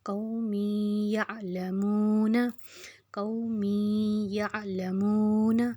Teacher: वाव पे जज़्म है उसके पीछे पेश है तो हम इसको 2 हरकत खींचेंगे। नून के ऊपर ज़बर है तो हम उसको नहीं खींचेंगे।